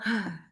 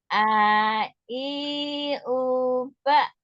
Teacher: Kan ba enggak boleh ada udara ya.